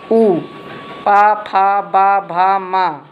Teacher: ये ओष्ठ से निकलता है, इसको ओष्ठी कहते हैं।